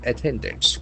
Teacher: The accent falls on the second syllable.